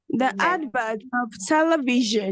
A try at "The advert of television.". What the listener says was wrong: Advert, the T should be heard.